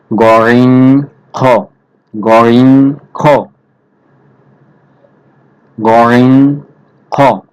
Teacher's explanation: কণ্ঠনালীর শেষ হইতে উচ্চারিত হয় গরিং খ মোটা করে উচ্চারণ হবে তিন নাম্বার মাখরাজ কণ্ঠনালী শেষ হইতে উচ্চারিত হয়